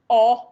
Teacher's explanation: O, which is forward like a funnel, but still dropped down